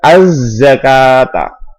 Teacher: ada huruf al-ta'rif atau al bertemu dengan huruf za. Za di sini adalah huruf syamsi. Asy-syamsiyah bisa dikatakan idgham syamsi. Cara membacanya dimasukkan